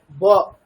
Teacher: দুটো ওষ্ঠ পুরোপুরি স্পর্শ করলে যে উচ্চারণটা হবে সেটা বর্গীয় বয়ের উচ্চারণ, তাই তো? ব এরকম।